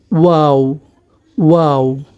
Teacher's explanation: অর্থাৎ শুরুতে এবং শেষে আমাদের মুখ গোল হবে, মাঝখানে মুখটা একটু খুলে যাবে